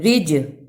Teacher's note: جیم حرف قلقلہ ہے اس لیے اس کو ہلا کر پڑھنا ہے، یعنی پڑھتے ہوئے جیم کی آواز پلٹ کر آئے